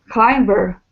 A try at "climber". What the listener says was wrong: Yeah, there's no B. Climber.